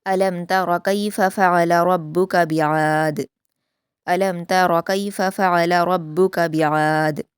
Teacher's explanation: अलम तरा में रा को पुर पढ़ा जाएगा और रब्बुका में भी रा को पुर पढ़ेंगे। लास्ट में दाल की तनवीन वक्फ़ करते हुए जब जज़्म में बदलेगी तो यहाँ पर क़लक़ला किया जाएगा।